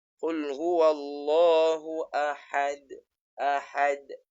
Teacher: Ahad dia qalqalah kubra tetapi dia bukan asyaddu kubra. Dia tak perlu tekan sebab tidak ada syaddah.